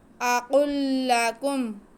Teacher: قاف حروف مستعلیہ، اسے موٹا کر کے بھی پڑھیں گے